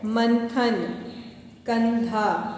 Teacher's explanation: अनुस्वार यानी कि अंकी बिंदी का उच्चारण नाक से किया जाता है